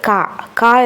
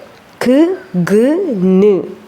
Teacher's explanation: വീലം soft പാലറ്റിൽ അവിടെ നാക്ക് കൊള്ളുമ്പോൾ, back of the tongue, നാവിൻ്റെ പിറകു വശം കൊള്ളുമ്പോൾ ഉണ്ടാകുന്ന ശബ്ദങ്ങളാണ്